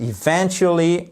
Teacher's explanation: on fait bien l'accentuation ici sur V-E-N